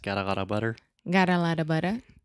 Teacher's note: that is the flap T that is much more similar to a Portuguese are